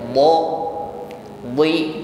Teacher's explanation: huruf d juga memiliki sifat Isti dan itbaq bunyinya tebal ya do entah dia fathah entah dia harakatnya kasrah tetap tebal